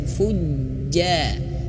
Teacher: di sini ada tasydid huruf jim, itu harus ditekan dan tekanannya jangan sampai terputus suara.